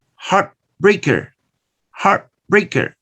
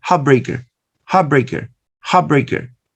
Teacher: You change the sound ta to the sound pa to make it similar to the sound ba. And notice heart finishes in the sound ta. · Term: assimilating